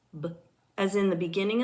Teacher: B is a voiced bilabial stop consonant.